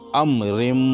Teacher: امرم، یہ رم جو ہے یہ میم مشدد ہے، اور میم مشدد کا قاعدہ آپ نے پڑھا ہے کہ جب میم مشدد ہو تو اس کو 1 الف کے برابر ناک میں آواز لے کر پڑھا جاتا ہے۔ یہاں میم کے اوپر تشدید ہے تو ہم را کو میم میں ملا کر اس کو 1 الف کے برابر ناک میں آواز لے جا کر پڑھیں گے، امرم، اس طریقے سے۔